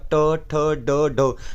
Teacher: मूर्धन्य व्यंजन जो होते हैं वो ट ठ ड ढ होते हैं